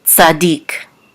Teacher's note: And this is the tevir, which is the trot mark and the accent mark. So we know that the accent is on the last syllable, dik, tzadik.